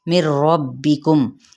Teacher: نون ساکن کے بعد را آ رہا ہے تو یہ ادغام بلا غنہ کا قاعدہ یہاں پہ ہوگا